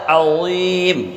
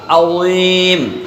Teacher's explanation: عظیم میں سب سے پہلے عین ہے، درمیان حلق سے ادا ہوتا ہے۔ وا ہے حروف مستعلیہ میں سے موٹا، یعنی پر پڑھا جائے گا۔